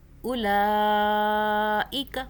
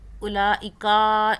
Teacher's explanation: اولئک، کا کو بھی نہیں کھینچنا. اولئکا ایسے نہیں کرنا.